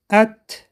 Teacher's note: مخرج حرف تا نوک زبان به ریشه دندانهای پیش بالا می رسد. این حرف صفت حمس دارد. ببینید دوستان، نوک زبان به ریشه دندانهای بالا می رسد.